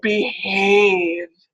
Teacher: It's a little bit more voiced because you've got E and A on either side, and the vocal folds might be vibrating throughout that H sound where they otherwise wouldn't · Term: voiced glottal fricative